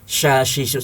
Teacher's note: Minasya itu harus berhembus huruf shin. Karena shin punya sifat tafasyi, artinya ada udara yang berkumpul di mulut kita secara kuat dan berhembus. Syashishu seperti kita kalau ngusir ayam ya.